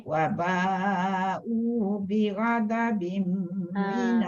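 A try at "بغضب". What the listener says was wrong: dha tu. Bi ghada dia jadi nipis. Bi ghada. Bi ghadabim.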